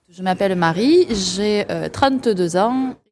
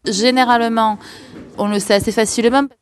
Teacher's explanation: in Marseillais French, those silent E's are actually pronounced